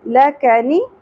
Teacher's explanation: یہ تینوں سنگل حرکات ہیں زیادہ نہیں کھینچنا لکنی یہو لا لفظ کلام پر ہوگا اور کھڑی زبر ہے